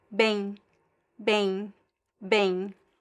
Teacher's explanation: There's no m sound at the end.